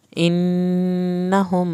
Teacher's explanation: नून की शत पे 1 अलिफ के बराबर देर लगाएंगे, मीम को नहीं हिलाएंगे।